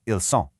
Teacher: It starts with an S, so it keeps a sharp hissing S sound